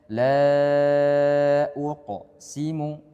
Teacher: qalqalah yang sughra yaitu pantulannya kecil. Perlu diperhatikan jangan sampai qaf ini menjadikan dia itu saktah.